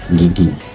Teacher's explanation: bagian punggung lidah itu ditekan ke langit-langit lunak, tapi dia menghasilkan getaran pita suara